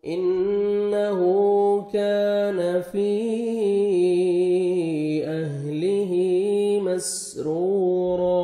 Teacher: نون مشدد ہے، غنہ کریں گے، نوز میں ساؤنڈ لے کے جائیں گے، الٹا پیش ہے، واو مدہ کا قائم مقام ہے، 1 سیکنڈ آپ نے ہا کو کھینچنا ہے.